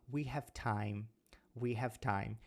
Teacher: ao invés de eu fazer o som de v eu faço um som de F então eu falo we time we have time é a pronúncia · se a gente tiver falando have mais uma consoante a gente faz o som de F